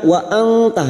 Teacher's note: pada kalimah waruqna waantirin sekarang kita Uraikan pada kalimah wa anta nun sukun bertemu ta Ikfa Hakiki kita semarkan bunyi nun sukun dan mendengung selama tiga harakat